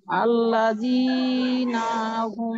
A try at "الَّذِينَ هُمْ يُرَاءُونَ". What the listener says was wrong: হ্যাঁ টান বেশি হয়ে গেছে আল্লাযীনা হুম জি জি ওই নাতেও কিন্তু একটু টান হয়ে গেছে টান হবে না ওই হ্যাঁ ওই যে আল্লাযীনা নাতেও একটু টান টান হয়ে গেছে